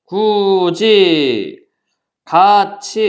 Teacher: 받침 ㄷ이 일을 만났고 받침 티읕이 일을 만났어요 각각 어떻게 바뀌어 지읒과 치읓으로 바뀌었다